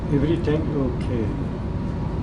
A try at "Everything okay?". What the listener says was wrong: Can you make your voice go up? Everything okay?